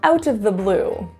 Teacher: the word of reduces into a, literally just schwa